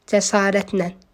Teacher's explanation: Cəsarətlə sözü, ümumiyyətlə sözdə la şəkilçisi çox zaman nan kimi tələffüz olunur və bu sözün tələffüzü də cəsarətlə olur.